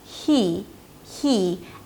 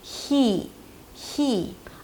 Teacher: because there is a high 'ee' right after, you really hear the air passing between the tongue and the upper palate.